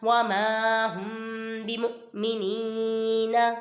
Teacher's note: ادھر دیکھیں میم ساکن کے بعد با آ رہا ہے، ادھر اخفاء شفیع ہوگا، ادھر گنہ کر کے پڑھیں گے، اور آگے حمزہ ساکنہ میں جھٹکا دیں گے۔